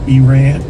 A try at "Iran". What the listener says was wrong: You roll the R a little bit.